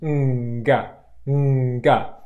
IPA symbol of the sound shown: ŋg